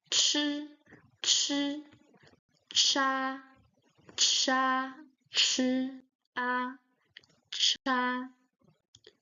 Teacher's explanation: the middle and the point of the tongue touching the upper palate, the middle, the palate. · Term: ch sound